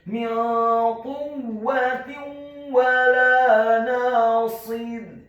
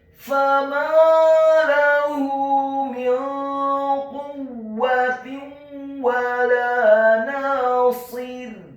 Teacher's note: huruf wawunya dibaca fathah 1 harakat, huruf lam alifnya dibaca tipis fathah 2 harakat. Kemudian kata nasir, huruf nunnya dibaca tipis tarqiq fathah 2 harakat karena setelahnya ada alif.